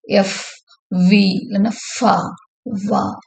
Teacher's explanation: The sounds is produced by bringing the lower lip close to the upper teeth. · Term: லேபியோ டென்டல் ஃப்ரிகேட்டிவ்ஸ்